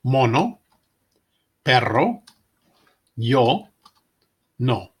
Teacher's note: Like the O in hope, but without the glide.